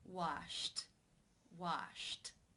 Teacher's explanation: The final sound in infinitive form is sh, the unvoiced sh sound. Since it is unvoiced, it is case 1, where the ed is pronounced as a t.